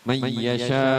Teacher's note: Mayyasha, man yasa tadinya nun mati bertemu dengan ya yang berbaris syiddah jadinya masuk. Kalau idgham seperti itu. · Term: idgham bigunnah